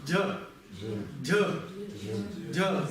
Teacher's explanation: Если у нас под «джа» идет «ха», то это какой звук будет? Аспирированный, с придыханием.